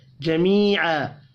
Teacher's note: یا مدہ اور الف مدہ 1 الف کے برابر کھینچ کر پڑھے جائیں گے۔